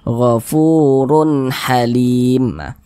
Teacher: tanda baca tanwin berjumpa dengan huruf ha hukumnya adalah izhar halqi karena dia izhar maka dibaca jelas tidak berdengung dibaca jelas Run Run terbaca ter baca jelas runnya tuh kemudian Tidak didengungkan